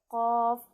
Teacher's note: Qaf, dia pangkal lidah tetapi dia menyentuh langit bagian belakang mulut.